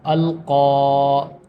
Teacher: یہ جو قاف ہے اس کو کاف کو تھوڑا موٹا کر کے پڑھیں گے